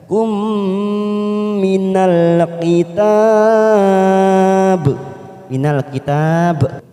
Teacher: ada mim sukun warna ungu bertemu mim, namanya idgham mimi, kita tekan 3 ketuk.